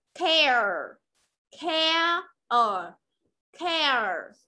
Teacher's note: Nó không có mỗi âm air đâu mà là có cả âm ở.